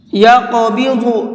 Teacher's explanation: یہاں پر قاف کو بھی اور ضاد کو بھی دونوں کو منہ بھر کے پڑھیں گے